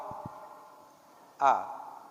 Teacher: huruf A itu keluarnya dari pangkal, dari tenggorokan paling bawah.